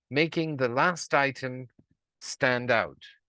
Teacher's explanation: I finished with stand out which I isolated and had falling intonation to signal that is the end of the sentence